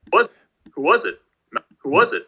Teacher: you can hear the was is sort of jumping out as more prominent than the rest of it · there's like a high star pitch accent followed by a low boundary tone of some sort uh so we get the sort of prominence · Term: wh questions